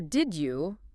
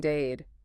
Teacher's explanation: Becoming dade. The D and the J sound merging into D. Exactly. It happens naturally, unconsciously, makes speech faster and smoother. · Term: assimilation